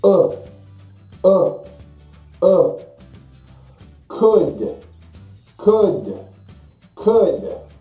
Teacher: U is produced further back than Japanese U.